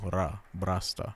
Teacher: So bra, brasta, bra. The accent is on the second syllable.